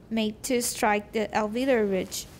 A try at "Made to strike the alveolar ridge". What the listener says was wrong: Made, 重一点,